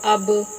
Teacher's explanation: با حروف قلقلہ میں سے ہے، یہ پڑھتے ہوئے تھوڑی سی آواز لوٹتی ہوئی محسوس ہوگی